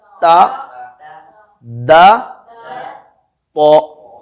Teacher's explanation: تو میں زبان کی جڑ اوپر اٹھ جاتی ہے جس سے تو کی آواز بھاری ہو جاتی ہے.